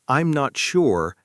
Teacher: In natural English, I'm not sure has the stress on sure, the word that carries the information. · I'm not sure has the stress on sure, the word that carries the information. I am not sure puts the stress on the wrong word, and it throws native speakers off slightly.